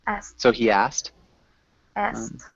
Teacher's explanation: just a T sound instead of the KT sound. Okay, asked.